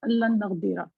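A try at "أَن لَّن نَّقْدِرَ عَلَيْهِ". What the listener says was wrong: नहीं, ये बेशक वाला नहीं है, देखे ना नून पे तजदीद है और ना जबर है, अन ये है के। अगर जेर होता ना इन तो होता अगर।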